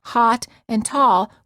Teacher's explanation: many Americans pronounce hot and tall with the same vowel sound. The o sound.